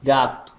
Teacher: oral oclusiva velar sonora